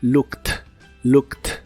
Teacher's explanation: Igual la doble O se pronuncia como una U corta y explosiva y la ED del final se pronuncia como si fuera una T